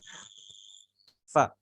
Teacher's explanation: ujung gigi di atas nempel di bibir bawah bagian dalam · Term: huruf fa